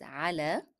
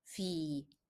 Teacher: the first one is pronounced as a because it is preceded by a letter carrying fatha. However, the second one is pronounced as e because the preceding letter is carrying kasra.